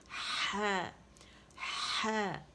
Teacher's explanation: زبان کی جڑ ہے اس کو نیچے کی طرف دبائیں اور پیچھے سے رگڑ کھاتی ہوئی ہوا کے ساتھ آواز جو ہے کلیئر باہر نکلے گی، ٹھیک ہے، باہر کی طرف آنی چاہیے.